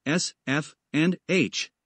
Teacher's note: fricative consonant a fricative consonant is a consonant sound that is produced by creating a narrow opening in the mouth so that air is forced through it producing friction or turbulence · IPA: [s], [f], [h]